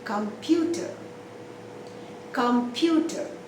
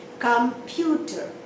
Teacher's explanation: you stress only on one syllable that is in the middle